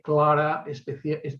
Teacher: la velarización de la L